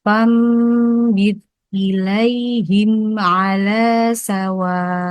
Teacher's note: membacanya merubah nun sukun atau tanwin menjadi mim dan dibaca dengan ringan ya Kak. Ditahan 2 harokat. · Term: iklab